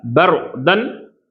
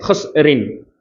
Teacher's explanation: இந்த ரா சொல்லும்போது பர் அப்படின்னு ரால தஃப்ஹீம் செய்யணும். இந்த ரின் அப்படின்னு சொல்லும்போது லைட்டாக சொல்லணும்.